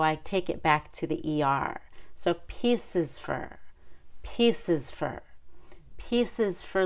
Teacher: e but then has the little short U at the end four is reduced to fur because of the Rhythm